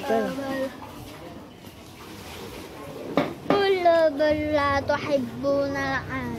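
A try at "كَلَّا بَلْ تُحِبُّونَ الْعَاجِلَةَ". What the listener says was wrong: kala bal tuhibbu tak pakai la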